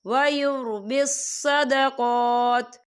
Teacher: یہ دیکھیے آپ کو چھوٹی سی تو ہی لکھی نظر آ رہی ہے تو یہ وقف مطلق کی علامت ہے، تو یہاں پر ٹھہرنا بہتر ہے. وقف کی صورت میں تا ساکن ہو جائے گا